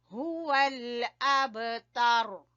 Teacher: با کے اوپر ہم نے ہلکا قلقلہ کرنا ہے